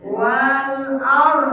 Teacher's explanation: ada ro mati setelah baris fathah, namanya tafhim, ro tafhim tebal